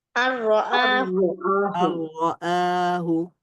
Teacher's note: ন সাউন্ডের মধ্যে র সাউন্ডটা কি হয়ে যাবে, মার্জ হয়ে গিয়ে শুধুমাত্র র সাউন্ডটাই থাকবে। এখানে আর কোনো ন সাউন্ড থাকবে না।